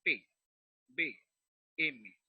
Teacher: Cuando usted pronuncia la B y la P, además de la M, va a observar que los dos labios, el labio superior y el labio inferior, se tocan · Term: bilabiales